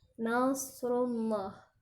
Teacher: Kata nasrullah ada huruf sha yang sifatnya tebal. Jadi harus dibaca dengan tebal dengan cara lidah kita letakkan di bagian bawah dan ujung lidahnya hampir mendekati gusi gigi seri bagian bawah atau gusi gigi yang bawah.